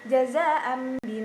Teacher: iqlab berarti mengganti apabila nun sukun atau tanwin bertemu dengan mbak maka bacaan nun sukun atau tanwin berubah menjadi Bunyi mim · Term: iklab